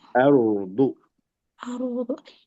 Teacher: Tebal, tapi jangan mantul. · Rohnya jangan mantul, jangan are.